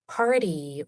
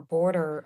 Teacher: combination of the flap T sound and the R colored vowels